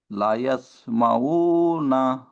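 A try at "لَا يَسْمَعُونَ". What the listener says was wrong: লা ইয়াসমাউনা, লা কে টান দেন এক আলিফ।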